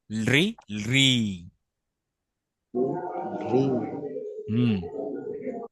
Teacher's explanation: এটা উচ্চারণ হবে লি হালকা ল সাউন্ড থাকবে